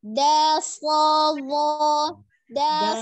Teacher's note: Jangan ada hamzahnya, hilangkan hamzah sukunnya